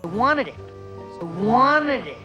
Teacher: We drop the T in the NT combination. Wanted becomes wanted.